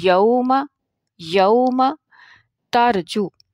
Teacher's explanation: یوم، یہاں پہ واو جو ہے یوم میں، یہ واو لین ہے اور واو لین کو پڑھنے میں ایک الف کا وقت لگتا ہے